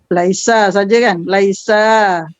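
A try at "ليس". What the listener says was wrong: Panjang, laisa.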